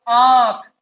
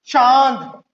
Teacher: अब इसकी जो उच्चारण ध्वनि है वो नाक और मुख दोनों से आ रही है। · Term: अनुनासिक